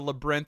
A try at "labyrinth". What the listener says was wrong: Also, did you just pronounce labyrinth with one syllable? No, he fit it into one somehow.